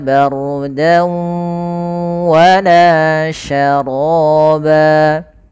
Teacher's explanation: yaitu kita memasukkan suara tanwin kepada huruf setelahnya yaitu huruf wau maka langkahnya yang pertama masuk kemudian menahan gunah maka Bardan awalnya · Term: idgham bhunah